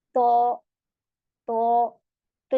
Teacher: तौ में पीछे से जबान उठ जाती है, जिसकी वजह से तौ हमारा मोटा हो जाता है जब हम इसे मुंह भर के पढ़ते हैं। तो तो तो और ता में ता ता जबान पीछे से स्ट्रेट हो गई और तौ में पीछे से उठ गई है। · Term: पुर लेटर